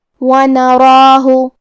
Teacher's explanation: حرف الرا کو موٹی آواز میں پڑھیں گے کیونکہ اس پہ کھڑا زبر ہے، تو یہاں مد الف ہے، اور مد الف اپنے پیچھے والے حرف کا حکم لیتا ہے تفخیم میں اور ترقیق میں، لہذا ہمیں مد الف کو بھی بھاری آواز میں پڑھنا ہے.